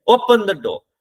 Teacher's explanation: हम क्या कहते हैं, ओपन द डोर. अब ओपन से आया, डो में आते हुए हमारी आवाज डाउन हो गई. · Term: फॉलिंग टोन